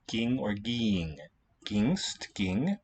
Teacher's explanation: What happens is the vowel letter E gets replaced by the letter I, by that vowel quality, and an N gets inserted, and that reacts with the gamma to give us an eng sound.